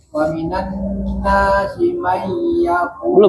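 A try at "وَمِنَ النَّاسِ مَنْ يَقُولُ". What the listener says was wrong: Belum. Tahan dulu. May sebelum bunyi ya-nya sempurna ditahan.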